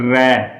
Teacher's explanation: जीभ के अंदर एक कंपन उत्पन्न होती है। जीभ के अंदर एक कंपन उत्पन्न होती है, इसे प्रकंपित व्यंजन कहते हैं।